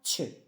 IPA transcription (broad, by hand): tʃ